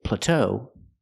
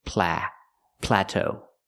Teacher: we have to stress both syllables